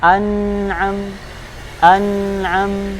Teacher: Dibaca jelas sesuai makhrajnya tanpa tambahan dengung. Kalau kita baca seperti an'a, salah ya. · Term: izhar